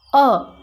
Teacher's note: जब हम अ का उच्चारण करते हैं अ तो हमारा जो ओस्ट है वह वृत्ताकार नहीं होता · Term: अवता का स्वर